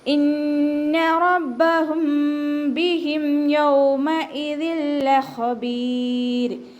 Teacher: ഇന്ന ഹംസയെ ക്ലിയർ ആക്കിയിട്ട് നൂനിന് ശ്രദ്ധ കൊടുത്തിട്ട് നല്ലോണം മണിച്ചു കൊടുക്കുക കേട്ടോ. ഇന്ന റബ്ബഹും ബിഹിം റ ഫത്തഹ ആയതുകൊണ്ട് ഉയർത്തിയിട്ട് വേണം ഉച്ചരിക്കാൻ.